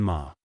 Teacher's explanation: Third tone, falling and then rising